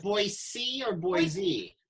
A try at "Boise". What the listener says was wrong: No Z. You got to be super particular about that. It was the thing I learned within my first week of being in Boise, that it's Boise.